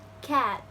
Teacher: when you say it, your mouth is almost wide open